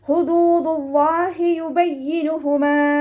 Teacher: ഹുദൂദുല്ലാഹി യുബയ്യിനുഹുമാ. ഇവിടെ ഹ എന്നുള്ള അക്ഷരത്തിന്റെ സൗണ്ടിനെ തൊണ്ടയുടെ അവസാന ഭാഗത്ത് തന്നെ കൊണ്ടുവരിക കേട്ടോ. ഹംസയുടെ സൗണ്ടായി പോവാതെ നോക്കുക.